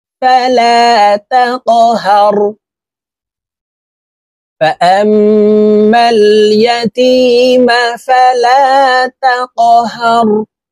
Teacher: এই কফ কলকলার হরফ উপরের দিকে ধাবিত করে ধাক্কা দিয়ে উচ্চারণ করব